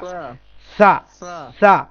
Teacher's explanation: জিহ্বার ডগা, সামনের দাঁতের আগা